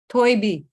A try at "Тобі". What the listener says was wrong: Тобі. Тобі. Without «ї». Тобі.